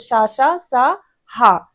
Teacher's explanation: इनका उच्चारण करने के लिए भीतर से अधिक जोर से श्वास लानी पड़ती है। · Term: उष्म वर्ण